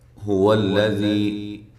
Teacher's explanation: ہا کو واضح نکالنا ہے اس کے مخرج سے، واو کو ہونٹوں کو گول کرتے ہوئے، لام کو موٹا نہیں کرنا، لمبا بھی نہیں کرنا۔